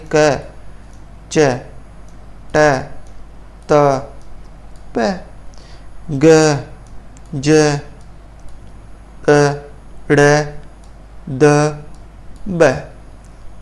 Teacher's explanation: अल्प प्राण जिनसे थोड़ी वायु बाहर निकलती है